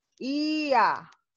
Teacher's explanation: Ya creció en este caso al abrir mi boca, ¿no? Empiezo con una vocal cerrada y termino con una vocal abierta. Por eso se le llama creciente.